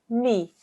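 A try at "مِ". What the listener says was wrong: Try not to make it too jerky, darling, yeah? Mi.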